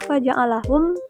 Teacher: karena mim mati bertemu huruf kaf dibaca jelas tanpa dengung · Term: izhar syafawi